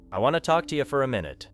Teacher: The speaker simply gave more energy to the important words want talk and minute while the smaller words became weak. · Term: reduced